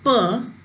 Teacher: both lips upper lip and lower lip they come together and then they make a complete closure and then air is released suddenly with the puff